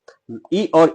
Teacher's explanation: ई और ई ये आपका तालु से होता है